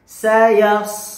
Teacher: Ujung lidahnya turun ke gigi seri bawah, kemudian keluarkan desis nafas.